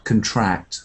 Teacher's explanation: So to get smaller is a verb and it has a stress at the end